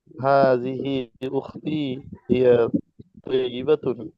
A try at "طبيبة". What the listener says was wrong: তবিবাতুন, তয়িবাতুন মানে উত্তম হয়ে যাবে, হ্যাঁ তবিবাতুন, হ্যাঁ।